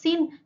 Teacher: Sin ini terletak di asnani lisawi, yaitu ee berada di ujung lidah dan gigi berupa geseran dan mahmus tidak bersuara. Lalu ee tipis.